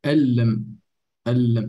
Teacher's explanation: So the noon is not heard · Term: idgham